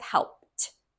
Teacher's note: If you'll notice, the D sounds like a T.